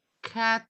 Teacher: Cat já está perto do palato mole. Cat, a zona roxa, não é?